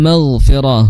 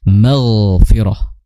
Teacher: ghain makhrajnya adalah di tenggorokan bagian atas, ya, kemudian dia memiliki sifat mengalirnya suara. Jadi jangan al-maghfirah tapi al-maghfirah, dialirkan suaranya.